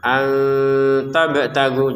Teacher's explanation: nun sukun bertemu ta dengan samar